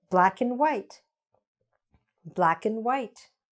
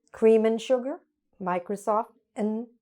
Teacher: we almost swallow the word and, and we just reduce it to n